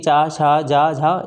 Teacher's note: जीभ के पिछले भाग का तालु से स्पर्श होता है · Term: तालव्य व्यंजन